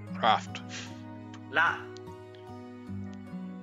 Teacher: the sound needs to be between an English r and l sound it's not quite an R not quite an L it's a